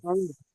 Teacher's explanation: আমরিন বলবেন না, এখানে রটাও সাকিন হয়ে যাবে